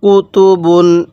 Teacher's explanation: এই তানভীনের উচ্চারণ বাংলায় দন্তান্য উচ্চারণ হবে অর্থাৎ শব্দের শেষে দন্তান্য উচ্চারণ হবে